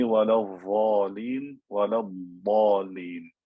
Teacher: Don't say وَلَا الضَّالِينَ وَلَا الضَّالِينَ, because you're using the correct makhraj, the sides of the tongue pushing up against the top of the mouth, and the sifa of istitala, and you're making it different from the dha sound, which is using the tip of the tongue and the edge of the top teeth.